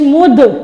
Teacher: دال کو ہم نے پہلے ساکن کیا ہے نا میم کے ساتھ ملاتے وقت، تو لہٰذا یہ حروف قلقلہ میں سے ہیں، اس لیے ہم اس کو ہلا کے پڑھیں گے دال کو۔ پھر دال کو آگے تا کے ساتھ ملائیں گے، تا کے اوپر جزم آ رہی ہے، دال تا زبردت مدت۔